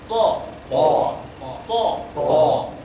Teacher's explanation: to persis dengan ta cuma dimonyongkan